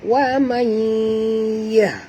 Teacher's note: Nun mati bertemu ya, kita kena masukkan bunyi nun ke dalam ya. Ini idghamkan dia dengan nama idgham ma'al gunah.